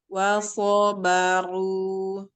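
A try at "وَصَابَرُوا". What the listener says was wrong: Tinggal coba naikkan lagi pangkal lidahnya. Wasobaru. So.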